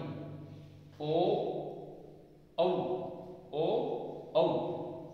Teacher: ये दो वर्ण हैं इनका उच्चारण कंठोष्ठ, कंठ और ओष्ठ से होता है।